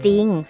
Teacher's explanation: แต่เมื่อเราอ่านออกเสียงเสียงของรอเรือนั้นไม่มี